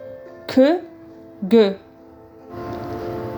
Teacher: contacte entre l'arrière de la langue et le voile du palais.